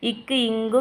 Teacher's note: ஆகிய இரு மெய்களும் நாக்குடைய முதல் பகுதி வந்து அன்னத்துடைய அடிப்பகுதியை பொருந்ததால பிறக்கிறது